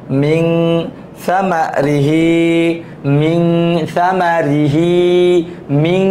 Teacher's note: থেমে গুনগুন করে শব্দ করা, এটা হচ্ছে গুন্না